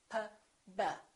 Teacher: P and B have the same point of articulation because both of them require the lips to close.